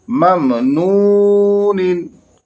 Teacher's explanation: वाव साकिन से पहले पेश है, वाव हरफ मद्दा, इसे थोड़ा खींच कर पढ़ेंगे